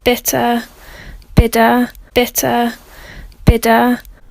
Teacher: So the t and the d are maintained in British speech in a way that they aren't in American speech.